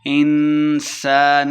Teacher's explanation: انسان اخفاء کا قاعدہ ہے، غنہ کر کے پڑھیں گے۔